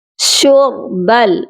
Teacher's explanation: را کو ہم موٹا کریں گے کیونکہ را جو ہے پیش کے ساتھ پڑھی جا رہی ہے